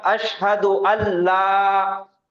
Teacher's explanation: تو یہ یہاں پہ قاعدہ ہوگا ادغام کا اور غنہ کے بغیر، کیونکہ لام آ گیا غنہ بالکل بھی نہیں ہوگا. تو یہ نون کی آواز ادغام کریں گے تو مرج ہو جائیں گی، مدغم ہو جائیں گی لام کے اندر